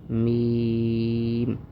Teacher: میم، اس حرف کو پڑھنے کا آسان طریقہ ہے، بہت ایزی ہے، بہت ہی سکون سے ادا ہوتا ہے، کہ دونوں ہونٹوں سے ادا ہوتا ہے۔ جو خشکی والی جگہ ہے دونوں ہونٹوں کی، وہاں سے یہ میم ادا ہوتا ہے